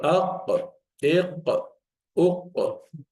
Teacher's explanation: just the base of the tongue, very close to uvula, that hanging of stuff there. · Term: qaf